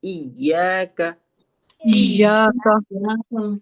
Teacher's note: دیکھیے یہاں زیادہ تر کاف کی جگہ قاف کی ادائیگی ہو جاتی ہے, کیونکہ یا پہ ہمیں سٹریس دینا ہے, تشدید لگی ہے نا, تو اس وجہ سے کاف پہ بھی سٹریس آ جاتا ہے